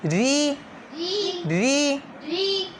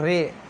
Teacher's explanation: اکثر بچے ادھر مجہول پڑھتے ہیں رے پڑھ لیتے ہیں رے، لیکن رے سے بچنا ہے ری بالکل باریک